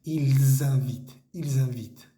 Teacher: tenemos que hacer esa liaison, esa conexión entre la S y la vocal que sigue, ¿listo? Ils invitent, tiene que sentirse esa vibración en la garganta.